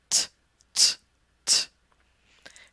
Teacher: The sound is made by touching your tongue right behind your teeth at that alveolar Ridge. Again it's a stop sound, you stop the air with your tongue, and then release it.